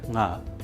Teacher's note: the last sound nga is uttered with the help of the nose. It is a nasal sound, and is called as anunAsika in Sanskrit.